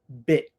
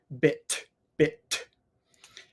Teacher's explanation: no air comes out because the tongue just stays up